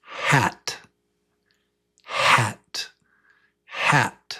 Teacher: It's only breath. No teeth. No voice. Just breath. Say it.